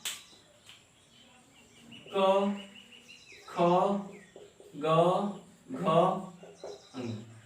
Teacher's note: यदि पूछे कि क वर्ग का उच्चारण स्थान कहां से है, तो कहां से, कंठ से